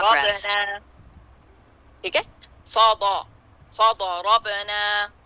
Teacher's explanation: تو اس کو یہاں دھیان دینا، فا فا فا کو باریک رکھنا، ضاد کو بہت زیادہ موٹا، پھر اس کے بعد را، ٹھیک ہے، پھر اس کے بعد را کو، یعنی را ضاد سے ہلکا پر ہوئے گا، فا باریک، ضا بہت پر، را ضاد سے ہلکا. فضربنا، با پہ قلقلہ، اور نا الف مدیہ 2 کاؤنٹ.